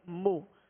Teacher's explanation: میم پر پیش ہے، ہونٹوں کو گول کر کے بغیر کھینچے بغیر جھٹکا دیے معروف طریقے سے ادا کریں گے